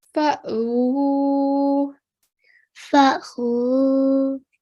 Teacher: Alif sakin, we make a soft jerking sound.